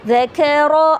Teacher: اب دیکھیں یہاں پہ دال کے اوپر زبر ہے، کاف کے اوپر بھی زبر ہے اور را کے اوپر بھی زبر ہے، لیکن یہاں پر ایک چیز آپ نے نوٹ کی ہوگی، وہ میں نے کیا کیا، دال کو میں نے لائٹ پڑھا، کاف کو میں نے لائٹ پڑھا، لیکن را کو میں نے ہیوی یعنی موٹا پڑھا